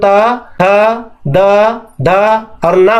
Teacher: दांत के जस्ट पीछे मसूड़े पर हमारा जीभ जब जाता है और टच मारता है तभी हम त, थ, द, ध और ना बोल सकते हैं। यदि हम उसे च जैसे बोला जाता है वैसे बोलना चाहेंगे तो ये 5 अक्षरों का उच्चारण नहीं होगा।